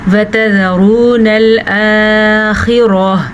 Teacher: را کو پر پڑھنا ہے کیونکہ واو ساکن ما قبل پیش ہے، تو یہ واو مدہ بھی ہو گیا اور را پر پڑھی جائے گی۔